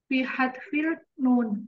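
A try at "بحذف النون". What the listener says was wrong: bihadfin nun. Kan nunnya itu alif lamnya dia syamsiyah. Jadi alif lamnya nggak kelihatan. Bihadfin nun, bukan bihadfil nun, nggak. Bihadfin nun.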